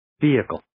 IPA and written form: ˈviːɪkəl (Vehicle)